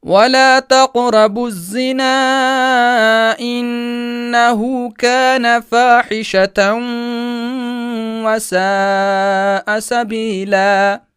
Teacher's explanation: اس تن کی آواز کو اس حرف یرملون واو میں داخل کر کے پڑھیں گے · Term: ادغام ناقص